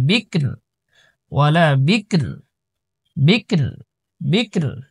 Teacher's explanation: فارض ولا বা কাফসির বিক র দুই পেশ রুন বিক রুন রর মধ্যে দুই পেশ রয়েছে অক্ফ করার কারণে সাকিন হয়ে যাবে